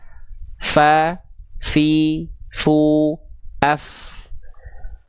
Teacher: Ditandai dengan mengalir suara dan nafas di saat yang bersamaan · Jadi huruf fa itu dilafakkan dengan cara menyentuhkan perut bibir bawah kita ke ujung gigi seri atas. Yang disebut dengan perut bibir bawah adalah bibir bawah bagian dalam yang area di sini kita kasih warna ungu.